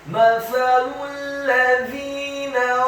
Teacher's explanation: Lidahnya agak keluar sedikit, fathah satu harokat. Huruf lamnya dibaca tipis, dhammah. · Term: tarqiq